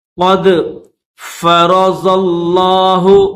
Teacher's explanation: را کو بھی موٹا پڑھیں گے، زواد کو بھی موٹا پڑھیں گے، یہ جو زواد ہے اس کو لفظ اللہ کے ساتھ ملائیں گے، کیونکہ لفظ اللہ کے اوپر تشدید بھی ہے اور کھڑا زبر بھی ہے، تشدید بھی ہے تو زواد کو لفظ اللہ کے ساتھ ملا کر پڑھیں گے۔